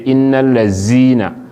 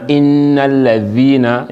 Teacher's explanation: your tongue it just project a bit in between your tooth, your front teeth them, for differentiate between the letter dhal and zai.